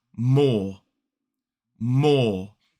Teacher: Now, we don't pronounce the E at all in this word, which means that we don't pronounce the R because it's not coming before a vowel sound. So this word in a modern British RP accent is more.